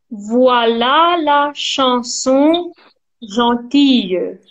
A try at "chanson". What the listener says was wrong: be careful with the nasal, the A nasal,